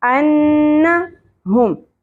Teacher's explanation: نون مشدد کے اوپر غنہ ہوگا لیکن زبر کو زیادہ نہیں کھینچنا. انا نہیں پڑھنا.